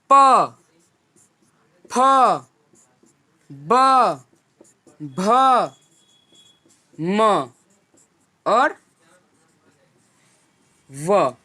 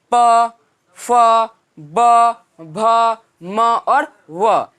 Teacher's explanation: जिन व्यंजनों का उच्चारण स्थान दोनों होठ होता है उन्हें ओष्ठ्य व्यंजन कहते हैं